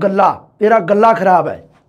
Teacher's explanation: ਅੱਦਕ ਦੀ ਪ੍ਰਵਰਤੀ ਬਹੁਤ ਹੈ ਬਾਈ ਪੋਠੋਹਾਰੀ ਭਾਸ਼ਾ ਦੇ ਵਿੱਚ